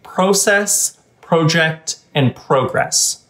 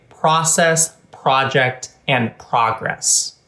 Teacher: Americans are more likely to pronounce these words with an ah vowel. So they would tend to say process, project, and progress. · In certain words that start with pro, Canadians tend to say these words with a true O vowel.